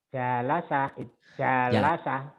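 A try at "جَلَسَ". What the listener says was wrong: Nggak ada yang panjang.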